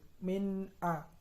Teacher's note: Yang keenam yaitu bacaan idhar halki, terdapat pada kalimat min al, karena ada huruf nun mati bertemu dengan huruf alif, cara membacanya jelas di mulut